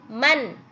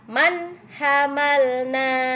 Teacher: di sini ada nun sukun bertemu dengan ha ya nih nun sukun bertemu dengan ha harus dibaca jelas Man n-nya kedengaran jelas nunnya Man ya Man hamalna kemudian selanjutnya